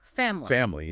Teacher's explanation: That middle I gets really reduced, almost disappears. It doesn't mean it's always silent, but it hints that it's a less stressed, potentially droppable sound in casual speech.